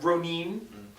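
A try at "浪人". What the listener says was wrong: You gotta roll the R too.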